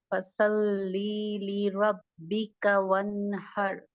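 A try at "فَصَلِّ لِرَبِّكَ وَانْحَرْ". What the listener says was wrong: ली को आपने लंबा कर दिया। ली तब होगा जब या मद्दा के साथ जुड़कर आएगा। फसल ली, तो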